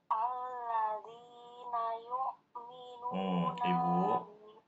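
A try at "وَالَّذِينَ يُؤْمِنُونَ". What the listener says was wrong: Ibu bacanya bukan alladzi karena ada wawu di situ. Walladzina yu'minuna.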